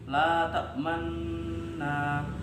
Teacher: cara membacanya yaitu dengan mencampurkan dhammah disertai sukun dengan memoncongkan bibirnya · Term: ismam